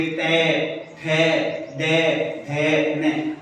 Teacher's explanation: हमारी जीवा है वो कहां टकरा रही है? मूर्धा के टकरा रही है। · इन वर्णों को बोलेंगे तो हमारी जीवा है वो कहां जाकर के टकराएगी? मूर्धा पर जाकर के टकराएगी। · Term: मूर्धन्य वर्ण